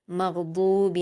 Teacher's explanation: गईन पर जज्म है तो हुरूफ कलकला में से नहीं आता गईन, इसलिए यहाँ पर हम कलकला से बचेंगे